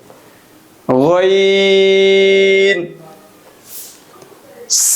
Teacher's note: গইনের মাখরাজ হলো হলকের শেষ হইতে বা কণ্ঠনালীর শেষ অংশ হইতে গইন উচ্চারিত হয়।